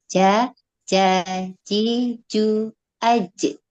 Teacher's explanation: Huruf jim makhrajnya yaitu tengah lidah menempel pada langit-langit mulut.